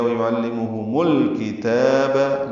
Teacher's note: کاف تا دونوں باریک ہیں، تا کو 2 حرکات لمبا بھی کرنا ہے · لام ساکن پہ اظہار قمری ہے